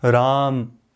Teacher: अब 2 मात्रा में एक और जुड़ जाएगी, त्रिमात्रिक हो जाएगा यदि, तो मैं कैसे बोलूँगा, राम, थोड़ा सा खींच के बोलूँगा, प्लुत में बोलूँगा